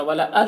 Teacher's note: दाल में कलकला होगा